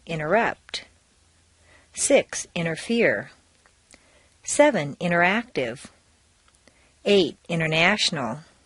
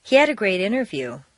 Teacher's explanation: make sure that the underlying T's are silent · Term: the silent T